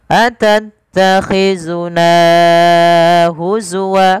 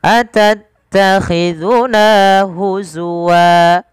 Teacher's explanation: nanya dipanjangkan 2 harakat, jangan terlalu lebih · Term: mad tabi'i